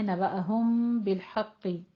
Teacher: میم ساکن کے بعد با، تو ہمارے یہاں پہ اخفا شفی ہو رہا ہے